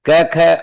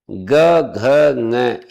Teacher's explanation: क ख अघोष होते हैं। ग घ ये घोष होते हैं।